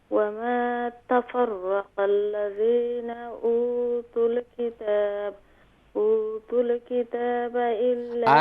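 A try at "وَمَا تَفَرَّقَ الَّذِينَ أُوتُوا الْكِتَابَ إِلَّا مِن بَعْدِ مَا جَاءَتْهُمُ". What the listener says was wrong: آرام آرام سے ، جلدی کرتی ہیں آپ۔ اوتوا الکتاب الا من بعد ما جاء، اس طریقے سے پڑھیں آرام آرام سے۔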